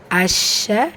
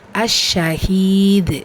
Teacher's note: அஷ்ஷ ஷத்தாக்குரிய அழுத்தம் கொடுங்க. ஹீல யாமத்தா இருக்குது, 2 ஹரக்கத்தளவு நீட்டம் கொடுங்க.